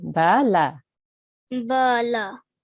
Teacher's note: they're both 1 second or 1 count. One of the sounds cannot be longer than the other. They have to be the same length, right?